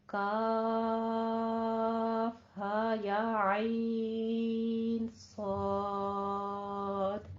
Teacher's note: کاف کے اوپر بھی، عین کے اوپر بھی اور صاد کے اوپر بھی یہ ہماری مد لازم مخفف آ رہی ہے · عین کو وسط حلق سے نکالنا ہے، ہا کو عقص حلق سے موٹی آواز نکالنی ہے، صاد کو اپنے سیٹی کی آواز کے ساتھ اور پر حروف میں سے ہے، اس کی پر آواز رکھنی ہے.